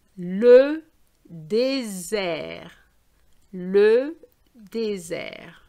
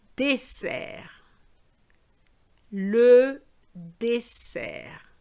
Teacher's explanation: Now, when you have two S's, you have to have the snake sound, as I call it, dessert. But if you have an S between two vowels, and I said it before, we're going to have a Z sound. So the first one is the snake sound, and the second one is the worm sound.